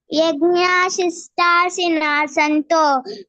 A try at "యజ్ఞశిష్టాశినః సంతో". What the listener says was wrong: Starting తప్పిపోయింది, first line మళ్ళీ ఒకసారి చదువు. యజ్ఞశిష్ట, నువ్వు యజ్ఞాశిష్ట యజ్ఞ లేదు, యజ్ఞశిష్ట.